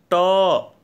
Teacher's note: अब जैसे ट का ट, आप देखते हैं कि आपकी जीभ जो है ऊपरी हिस्से में, मुख के ऊपरी हिस्से में मूर्धा में टच करती है, इसलिए ट का उच्चारण स्थान मूर्धा हो गया।